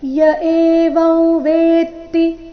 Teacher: ವೇ ಮೇಲೆ ಸ್ವಾಭಾವಿಕವಾಗಿ ಆಘಾತ ಬರಬೇಕು